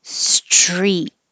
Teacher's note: This STR combination can be difficult, so make sure when you have your tongue behind your teeth for the S, when you're making the T and you release it, you're pulling your tongue back and dragging it on the top of your mouth until you get to the R position. Street. And you don't have to say the T, but I put my tongue back in that place.